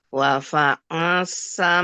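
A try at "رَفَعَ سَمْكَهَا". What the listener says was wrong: Rafa'a. Ra, bukan wa.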